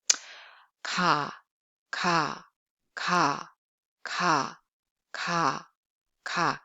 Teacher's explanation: It has a sound value of English more like a case sound, Basically voiceless sound with no aspiration and tenseness. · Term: plain sound